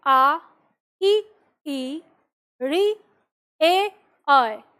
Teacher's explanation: तो हमारे होठ गोलाकार नहीं हो रहे फैले हुए हैं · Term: आवृत मुखी स्वर